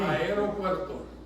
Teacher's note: Yeah, you gotta roll the R right over.